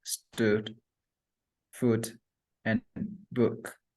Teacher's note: The next vowel sound is U, which area is back, the tongue position is high, the lip shape is rounded, and the muscle tension is lax.